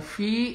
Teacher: Kemudian fi ini mad tabi'i, ada kasroh di huruf fa, kemudian ada ya mati, berarti mad tabi'i ini 2 harokat